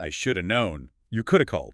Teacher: That should have collapses into shoulda.